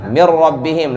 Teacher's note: Enggak ada dari hidung, enggak ada gunnah.